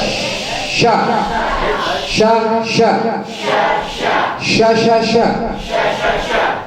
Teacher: Nah itu kalau shin, sifat tafasyinya berada di awal memang. Sebelum terucap sudah ada tafasyinya.